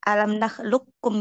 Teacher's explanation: Alam nakhlukum langsung masukin ke kaf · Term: idgham sempurna